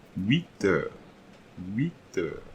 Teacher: So there will be another liaison in this sentence. So this liaison will be here between the T and the EU